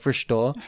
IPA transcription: fɚʃto